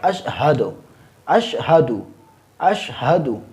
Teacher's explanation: اس میں جو ہا ہے اس کو حلق کے پہلے حصہ سے ادا کیا جائے گا، یعنی منہ کی طرف جو حلق کا پہلا والا حصہ ہے یہ والا اس سے ادا کیا جائے گا، اشہد اشہد اشہد، اس طرح۔